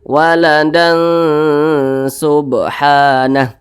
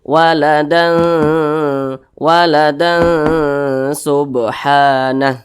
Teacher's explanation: Nah jadi cara bacanya itu disamarkan kemudian juga didengungkan W Subhan didengungkan itu suaranya itu kita tahan kita panjangkan panjangnya itu dua harakat atau kira-kira dua ketukan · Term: ikhfa Hakiki